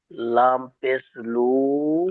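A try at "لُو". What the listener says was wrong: লাম পেশ লু নয়, লামের উপরে পেশ এসছে আর তারপরে ওয়াওয়ের উপরে সাকিন এসেছে, ওয়াওয়ের উপরে সাকিন এসছে, তাহলে লাম ওয়াও পেশ, লাম ওয়াও পেশ লু, লাম ওয়াও পেশ লু।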